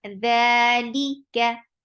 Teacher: The 2 counts long. Li for kasra, give e sound. Kaf is light. Fatha is very short.